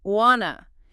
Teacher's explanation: the classic want to which reduces to wanna. Wanna. You hear this everywhere in casual speech.